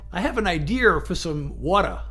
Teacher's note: in Massachusetts they put an R sound at the end when it doesn't belong there, but when it does belong there, they don't say it